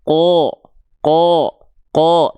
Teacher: Nah kalau huruf tebal dia tidak akan terdengar seperti vokal a ketika fathah tapi dia akan lebih e mirip seperti vokal O